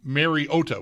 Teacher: pronouncing Mariota's name Mariota with the emphasis on the O